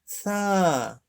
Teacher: সা হলো জিহ্বার আগা সামনের উপরের দাঁতের আগার সাথে লাগিয়ে নরম করে বলতে হবে